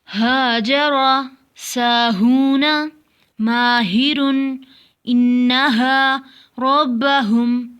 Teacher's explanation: ہا کو سینے کی طرف سے ادا کریں گے